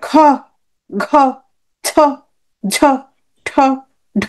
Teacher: আর যখন চাপটা বেশি থাকবে খ ঘ ছ ঝ ঠ ঢ, বর্গের দ্বিতীয় আর চতুর্থ, দ্বিতীয় চতুর্থ, মহাপ্রাণ, মহাপ্রাণ।